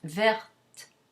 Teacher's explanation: It's not verte or verte or verte, none of those. It's just verte with a tiny bit of release of aspiration because the T is in final position.